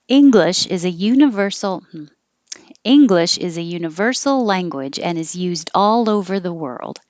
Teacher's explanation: it's higher and longer on ing and ver and all